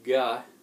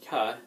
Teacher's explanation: and so it's kind of in the back of your mouth if you say gah it's the same as cut but you're adding some some vocal chords to it